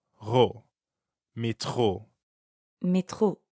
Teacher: the French R is in the middle of métro, so it sounds like you're clearing your throat